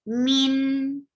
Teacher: give tawassut on noon, and tawassut is medium flow of sound